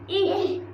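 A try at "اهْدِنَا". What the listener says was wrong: ইহি বললে হবে না ইহ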